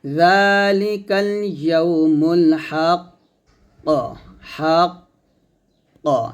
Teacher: ওয়াকফ করলে কফটা কলকলা হবে, আর এটাকে বড় কলকলা বলা হয়